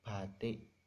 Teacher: Vokal tinggi bawah ini dihasilkan dari huruf yang I yang mengarah ke E. Misalnya batik, nah itu kan I-nya mengarah ke E, bukan batik tapi batik, nah gitu.